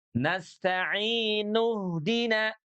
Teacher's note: Huruf hamzahnya dilewat karena dia hamzah wasal.